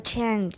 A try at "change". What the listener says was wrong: Remember, when you're having trouble with that A vowel before nasal, get rid of the nasal. Just forget about the nasal and say C-H-A-Y, chay. Everyone, chay. Chay. Just totally forget about the nasal. Worry about the nasal later.